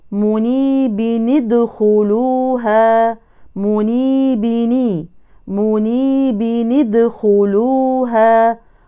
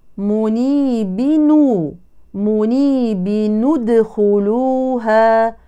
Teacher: الوصل طقس ساكنان الاول هو نون التنوين الساكنه والثاني هو الدال حفص يحرك نون التنوين الساكنه بالكسر فتقرا منيب ادخلوها مني بني منيب ادخلوها والقراء الاخرين حركوها بالضم